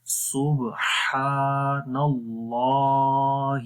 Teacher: یہاں پر صبح، اور ہا کی آواز بھی کلیئر ہے، لمبا بھی کر رہے ہیں، اور پھر نون کو آگے ملائیں گے اور اللام کو موٹا کریں گے